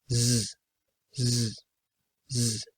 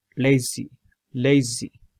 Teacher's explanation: That's a fricative sound. You have to use your tongue, but it's voiced.